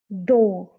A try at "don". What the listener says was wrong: Don. Good.